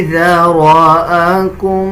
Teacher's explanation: اکثر لوگ ذال اور زا کو مکس کر دیتے ہیں، اس طرح پڑھنا غلط ہے، بلکہ ذال کو نرم پڑھا جاتا ہے. جب زبان کی نوک اب دونوں دانتوں کے درمیان لے کے آئیں گے تب ذال ادا کیا جائے گا